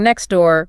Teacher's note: Then there is elusion where a sound is just dropped completely like next door becoming next door. We just lose the T